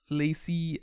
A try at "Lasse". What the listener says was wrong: His name is pronounced Lasse, not Lassie.